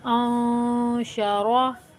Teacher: انشروا، جب آپ اخفا کریں گے اسی طریقے سے ادا کریں گے جیسے کہ میں پڑھ رہی ہوں، تو آپ کو خود ہی محسوس ہوگا کہ ہماری آواز جو ہے ناک میں کہیں جا کر چھپ رہی ہے